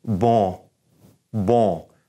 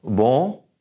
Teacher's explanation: And our tongue is not even going to touch the top of our mouth where we make an N sound. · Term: N in your nose